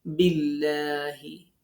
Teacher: আল্লাহ শব্দের লাম বারিক হবে